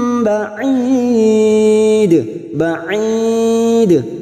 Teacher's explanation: Ada mad yang bertemu dengan huruf hidup dan dibaca waqaf. Mad arid li sukun 4 harokat kita panjangkan. Lalu ujungnya terdapat huruf dal yang mati di akhir kalimat dan dibaca waqaf qalqalah kubra. · Maka nim kasrah tanwin bertemu ba namanya bacaan iklab siap membalik atau menukar. Kasrah tanwin kita tukar seperti bertemu dengan huruf mim. Maka di sini ada tanda mim kecil.